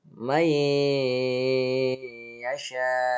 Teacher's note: Nun matinya dimasukkan ke dalam huruf ya sehingga tidak kelihatan nunnya. Jadi dibacanya may ya, bukan man tapi may yasha gitu.